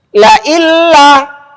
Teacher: bunyinya tetap sempurna. Menunjukkan bahwa dengung itu memang tidak ada ketika nun dimasukkan ke huruf lam.